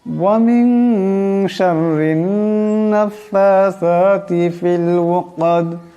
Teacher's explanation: ওয়া মিন এখানে নুন সাকিন, নুন সাকিনের পর শিন আসছে, এই নুন সাকিনকে ইকফার গুণনা করিয়া পড়তে হবে, একালে পরিমাণ ইকফার গুণনা হবে।